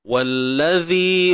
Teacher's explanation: Wallazi huruf zal, keluarkan sedikit hujung lidah kita